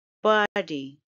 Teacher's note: it's a two syllable word and the stress is on the first syllable